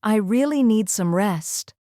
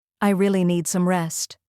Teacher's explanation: Start soft, rise on really, and fall gently on rest.